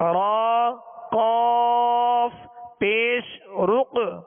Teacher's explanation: را کو پر پڑھیں گے اس لیے کہ را پر پیش ہے